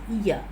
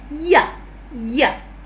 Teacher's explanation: The lips are spread there, and the vocal cords are vibrating. It's a sound, but the gap, it's not so narrow, and hence the air passes out without any audible friction.